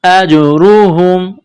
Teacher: حمزہ کو جیم کے ساتھ ملانا ہے، جیم ساکن ہے تو یہاں پر قلقلہ کریں گے. اجرہم، را کے اوپر پیش ہے تو موٹا کرنا ہے، ہا کو میم کے ساتھ ملانا ہے.